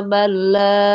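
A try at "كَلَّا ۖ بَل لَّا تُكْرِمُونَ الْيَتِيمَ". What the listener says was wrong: Lanya jangan terlalu panjang. 2 harakat.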